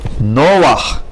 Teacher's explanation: Again, two rules are used. An accent on the first syllable instead of last, and under het at the end of the word, we read the vowel first and then consonant.